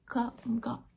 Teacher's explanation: Okay, and the next uvular, same thing as K and G, but move it back a little bit to where your uvula is making contact.